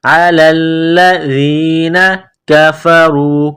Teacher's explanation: زال کو نرم کرنا ہے، زبان باہر نکالیں گے زال کو پڑھتے وقت